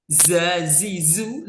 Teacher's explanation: Zazizu lidnya ada di belakang gigi. Zazizu lidahnya di belakang gigi yang bawah